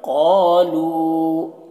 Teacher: قالو قاف کو موٹا کر کے پڑھنا ہے، قالو تھوڑا کھینچیں گے بھی، الف ہے، اور لو کو بھی تھوڑا کھینچیں گے، واو مدہ۔